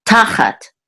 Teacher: And the accent is on the first syllable ta.